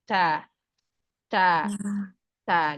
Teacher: Syiddah dulu yang dikasih. Karena syiddah ini sifat yang kuat. Tutup makhraj secara sempurna. Nanti ke fathah, seiring keluarnya fathah, dia juga keluar hamsnya.